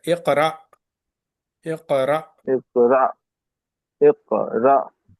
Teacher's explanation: When Hamza is having sukoon, you have to give little bit jerk.